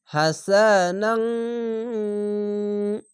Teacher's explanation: হা সিন জবার সা হা সা নুন আলিফ দো জবার নাং এখানে ইখফা গুন্না বাংলা অনেস্কার মত হবে